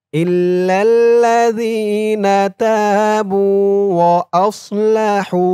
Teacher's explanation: হার উচ্চারণটা গলার ভিতর থেকে চিকুন হয়ে বের হবে